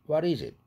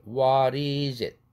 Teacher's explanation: 링크 되면서 what 할 때 it는 플랩 되죠